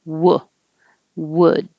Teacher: you have to round your lips for the w but for the uh sound you usually don't round your lips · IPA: ʊ